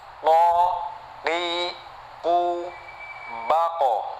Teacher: paling pangkal lidah itu keluar huruf qaf ya, huruf qaf. Ini dekat sekali sama makhraj yang kha sama gha tadi ya, tetapi kalau ini di lisannya tetapi pangkal, pangkal lisan. · Ya, yang penting yang terakhir ini sukun ya, mati semua ya. Oke, itu makhrajnya dari lisan yang paling belakang gitu.